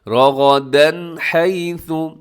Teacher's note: یہاں غنہ نہیں ہے، کوئی اخفا نہیں ہے بلکہ اظہار ہے، تیزی سے پڑھنا ہے.